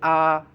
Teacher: अब इसका बोलिए आ, बड़ा आ, तो इसमें गोल नहीं हो रहा है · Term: अव्रतमुखी